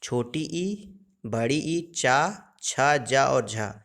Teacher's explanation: चा वर्ग और ई और बड़ी ई का उच्चारण तालव्य से होता है।